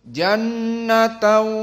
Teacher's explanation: jannatan di sini nun musyaddadah, dan nun musyaddadah dalam keadaan wujub al-gunnah. Maka karena dia gunnah makhrajnya dari khaysum.